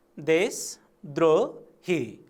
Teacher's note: सामान्यतया शब्दका अन्तिम वर्णहरू ह्रस्व उच्चारण हुने गर्दछन्। अन्तिम वर्णहरू ह्रस्व उच्चारण हुने कारणले गर्दा उच्चारणमा चाहिँ हामीले ह्रस्व प्रयोग गरेका हौँ